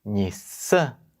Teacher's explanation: a nasal do Japonês é pronunciada Você fecha a boca para pronunciar não nasala como nós fazemos